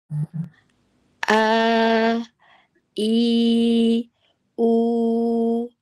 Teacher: Ketika kita membaca mad alif, mad wau, mad ya tanpa mencampur suara hidung atau suara gun ghunah. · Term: makhraj aljauf